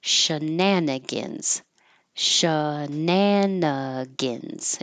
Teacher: It looks like gan, but we're going to make it shorter and sound like gin, or gun, because it's not stressed